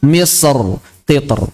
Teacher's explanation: Karena gara-gara ada itbaq sebelumnya, menjadi ro-nya berat ketika ditarqiqkan. Misr kan aslinya tipis tuh, ro. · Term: tafkhim